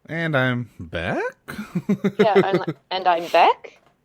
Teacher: when I hear it in my head I always go up at the end like you do for a question